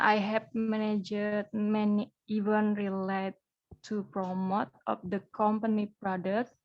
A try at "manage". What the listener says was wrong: Ini bacanya manage ya, bukan managed. Manage.